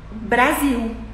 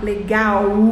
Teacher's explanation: Em português, quando a gente fala uma palavra que termina em L, a gente transforma em U.